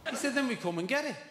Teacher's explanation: At the ends of words in certain situations, t can be lenited to the point that it's pronounced as h.